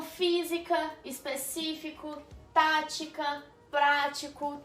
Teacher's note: Palavra que a sílaba tônica é a antepenúltima, né? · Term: proparoxítona